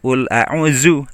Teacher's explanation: untuk dzu itu ujung lidah nempel di ujung gigi atas ya. Jangan menggunakan z.